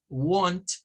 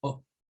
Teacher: algunos lo pronuncian más tirándole a una especie de A, want, y otros la pronuncian más con el sonido de la O recortada. No la O nuestra, sino O.